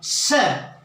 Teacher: श वहां ये श जो है मूर्धन्य कहलाता है, और वहां से जहां कठोर स्थान है वहां से और जीभ के बीच में से हवा निकलती महसूस होती है, वह मूर्धन्य कहलाता है।